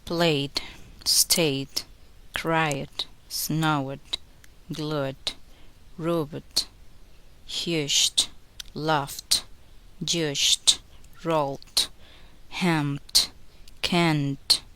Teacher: Even though there is a letter E before the letter D, do not make a vowel sound before D. This is silent.